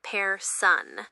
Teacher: The first word is person. It's pronounced with a slightly more forward rolled R and the N is not pronounced.